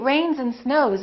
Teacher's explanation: when it's a voiced consonant followed by an S the S sounds like Z